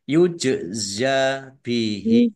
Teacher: jim sukun bacaan kolkolah, dibaca memantul, ditampakkan pantulannya